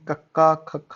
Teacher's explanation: ਫਿਰ second line ਕੰਠੀ ਹੈ ਕਿਉਂਕਿ ਜਦੋਂ ਤੁਸੀਂ ਕੱਕਾ ਖੱਖਾ ਬੋਲਦੇ ਹੋ ਨਾ ਤੇ ਤੁਹਾਡਾ ਕੱਕਾ ਬੋਲਣ ਲੱਗਿਆ ਜਿਹੜੀ ਤੁਹਾਡੀ ਆਵਾਜ਼ ਹੈ ਉਹ ਕੰਠ ਦੇ ਵਿੱਚ ਮਤਲਬ ਗਲੇ ਚੋਂ ਨਿਕਲ ਰਹੀ ਹੈ